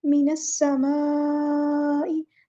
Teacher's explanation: सीन में सीटी वाज़ेह होनी चाहिए